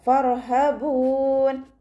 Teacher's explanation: റോ സുക്കൂനാണ്, ഉയർത്തി ഉച്ചരിച്ചു കൊടുക്കുക കേട്ടോ. · ഫ ലൈറ്റ് ആക്കിയിട്ട് ഉച്ചരിക്കാൻ ശ്രദ്ധിക്കുക. മേലെ മുൻപല്ലിൻ്റെ അറ്റം താഴെ ചുണ്ടിൻ്റെ ഉൾവശത്ത് നനഞ്ഞ ഭാഗത്ത് വെച്ചിട്ട് ഉച്ചരിക്കുക